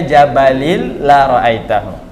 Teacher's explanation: ketika ada tanwin ketemu lam, maka dia disebut dengan idgham bila gunnah, masuk tapi tidak ada dengungnya